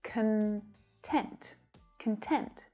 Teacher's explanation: So when it's used as an adjective, the syllable stress shifts to the second syllable, and the first syllable reduces right down, so the vowel sound becomes a schwa